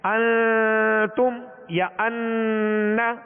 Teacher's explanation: کہ ایک الف کی مقدار میں آواز کو ناک میں لے جا کر ٹھہرانا. ناک میں آواز کو ظاہر کر دینا، ٹھہرانا ایک الف کی مقدار، جیسے انتم یا ان، تو یہ غنہ کہلاتا ہے، یہ غنہ کہلاتا ہے۔